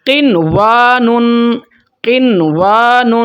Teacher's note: اظہار کا مطلب ہے نون کے اوپر ہولڈ نہیں کریں گے، غنہ نہیں کریں گے۔ قنوان، قنوان، اس کو جلدی سے ادا کر لیں گے غنے کے بغیر، اس کو ہم بولتے ہیں اظہار مطلق۔